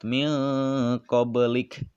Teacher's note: dibacanya terang dan memantul, bunyi pantulannya kecil dan berada di tengah kalimat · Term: qalqalah sugro